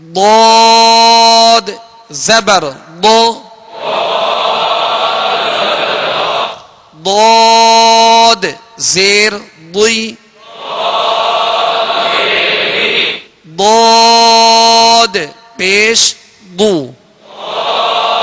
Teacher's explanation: जाएंगे इन हुरूफ में से यह दद भी है लिहाजा दद को पुर पढ़ेंगे और जबर जेर में होठ गोल नहीं होंगे